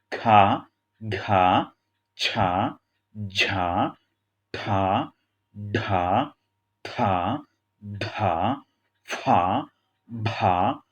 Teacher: ये व्यंजन जिनको बोलने में अधिक समय लगता है और बोलते समय मुख से अधिक वायु निकलती हैं, उन्हें महाप्राण व्यंजन कहते हैं।